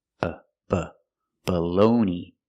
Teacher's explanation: The first vowel is not stressed, so it has the short sound, It's a schwa.